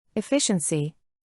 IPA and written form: ɪˈfɪʃ.ən.si (Efficiency)